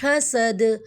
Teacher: حا کو ہم نکالیں گے اور دال کو ساکن کی صورت میں کلکلا ہوگا